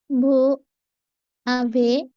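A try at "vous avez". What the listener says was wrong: বুঝাবে, এখানে একটা লিয়াজও করতে হবে, এসটার সাথে লাগায় পড়তে হবে, হ্যাঁ, যে বুঝাবে, হ্যাঁ, বুঝাবে।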